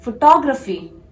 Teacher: You have to focus on the second syllable.